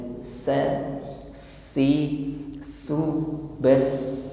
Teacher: huruf sin lebih tampak sifatnya, yaitu hamas, nafas yang mengalir.